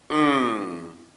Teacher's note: and the air is escaping through the nose again that's finally we have our ng sound and the closure there is happening further back in the vocal tract